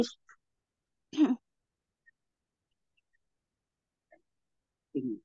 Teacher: Tanwin kasrah ketemu kofnya, baknya jadi tebel langsung ke huruf kof ya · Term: Ikhfa